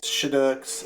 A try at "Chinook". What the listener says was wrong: There's no S on Chinook.